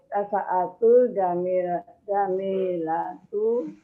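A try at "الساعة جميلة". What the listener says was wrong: Jadi taknya mohon maaf, taknya nggak panjang. As-sa'atu, bukan tu-nya nggak panjang. As-sa'atu, bukan as-sa'atu, bukan, taknya nggak panjang. As-sa'atu.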